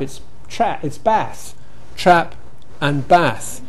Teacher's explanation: In American, we've got trap and bath, but bath has the same vowel as trap.